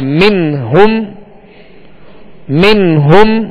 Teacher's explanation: حروف حلقی میں سے ہا آ گیا, اس لیے یہاں پر اظہار کریں گے, غنہ نہیں کریں گے